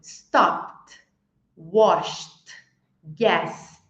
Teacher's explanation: o verbo não vibrou eu acrescentei a letra T